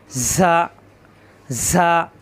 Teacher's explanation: সফিরের হরফ, জিহ্বা নিচের দাঁতের আগায় চাপ দিয়ে ঝা বাতাস বের হবে,